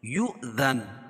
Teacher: واو لکھی ہو اس کے اوپر حمزہ اور جزم ہو، ٹھیک ہے، تو وہاں جھٹکا ہوگا